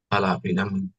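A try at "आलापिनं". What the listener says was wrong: Not pinam. Again, you are making it ma. Pinam. Alapinam. Alapinam. Alapinam. You see, your mouth should not close. You look at my lips.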